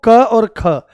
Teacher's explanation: तो आप देखो क और ख ये तो आपके अघोष होंगे। किसी वर्ग का पहला और दूसरा अघोष होता है